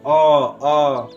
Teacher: अ ना आगे ना पीछे, मध्य का भाग सक्रिय हो रहा है।